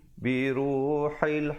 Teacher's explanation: ha baris bawah, ha pedas ya, bertemu lam